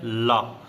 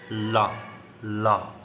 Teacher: हवा जीभ के बगल से निकल जाती है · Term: पार्श्विक व्यंजन